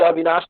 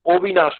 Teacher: ओकारांत मतलब शब्द के अंत में ओ का उच्चारण आता है। बांग्ला में ओकारांत नहीं, ओ ध्वनि शुरू में ही आ जाती, ओ से आरंभ होती है।